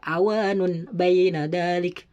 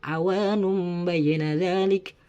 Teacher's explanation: Harus dibaca tanwinnya tersebut dibaca seakan-akan mim sukun